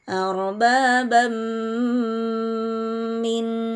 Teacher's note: ada tanwin bertemu huruf mim hukum hukum tajwidnya adalah idgham bunna dilebur disertai dengan dengung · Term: idgham bigunnah